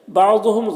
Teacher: ضاد حروف مستعلیہ میں سے پر پڑھیں گے، میم میں اظہار شفوی ہو رہا ہے، اسے جلد پڑھنا ہے۔